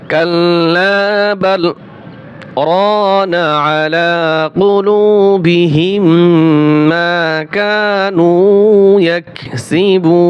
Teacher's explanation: বাল শব্দটা বলার পরে আমরা আওয়াজটা বন্ধ করে দিব, কিন্তু শ্বাসটা জারি রাখবো, ভাঙবো না। আমরা আওয়াজকে বন্ধ করে দিব, কিন্তু শ্বাস ভাঙ্গা যাবে না, শ্বাস আমরা ভাঙবো না, নিঃশ্বাস আমরা ভাঙবো না, কিন্তু আওয়াজটা বন্ধ থাকবে। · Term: সাক্তা